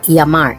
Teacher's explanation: Another regional variation is the pronunciation of double L, which is actually its own separate letter. Many Spanish dialects will turn this double L into a Y sound. Following this rule, this word is pronounced llamar.